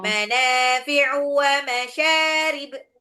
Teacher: U-nya pendek. U-nya jangan diayun.